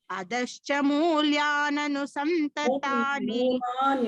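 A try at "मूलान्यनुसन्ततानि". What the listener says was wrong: It is not mulya.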